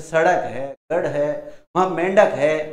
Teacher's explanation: जीभ ऊपर उठकर झटके के साथ नीचे आती है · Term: उच्छिप्त व्यंजन